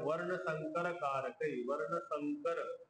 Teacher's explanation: संकर मध्ये जो अनुस्वार होता तो क पुढे असल्यामुळे क वर्गचा जो पाचवा अक्षर आहे त्यामध्ये चेंज झाला